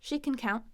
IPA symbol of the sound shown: kən